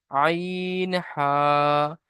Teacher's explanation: হলকের বা কণ্ঠনালীর মাঝখান হতে উচ্চারিত হয় আইন হা